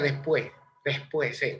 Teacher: s intercalada en lugar de decir después se pronuncia después después se aspira y suena como una jota